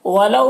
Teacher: ولو میں واولین سے نرم آواز کے ساتھ جلد پڑھیں گے